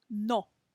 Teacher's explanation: instead of bringing our lips together at the end for that W kind of a sound, we're just going to do the O sound